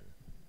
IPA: n